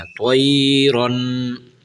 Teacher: تنوین کے اوپر غنہ کرنا ہے، تھوڑا سا آواز کو ناک میں سے لے جانا ہے